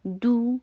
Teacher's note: میری آواز شارٹ بھی ہوئی اور دمہ کے لیے ہونٹوں کو گول بھی کیا گیا